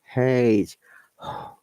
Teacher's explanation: your vocal cords do not vibrate when you make this sound. Instead, use a puff of air to produce the sound, like H. Air is coming out, and the same in British and American English. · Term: voiceless or unvoiced sound